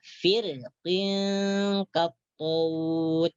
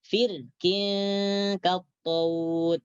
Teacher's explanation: Jadi ini diingat apabila ada huruf ra ya, apabila ada huruf ra mati dan sebelum huruf ra tersebut baris bawah, setelah huruf ra itu ada huruf isti'la yang berbaris kasrah, maka ra tersebut boleh dibaca tebal dan juga boleh dibaca nipis